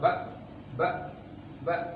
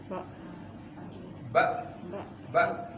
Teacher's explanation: Jadi dia istifal kalau kondisi lidahnya stabil, tidak terangkat naik, kondisi lidahnya santai gitu ya, maka disebut dengan sifat istifal.